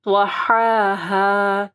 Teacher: ٹھیک ہے، والأرض وما طحاها، طا کو موٹا پڑھنا ہے، پھر نرم والی ہا کو جو ہے نا گلے کے درمیان سے درمیانی حصے سے پڑھنا ہے ، اور یہ والے ہا کو ہا اور پھر ہا، طحاها،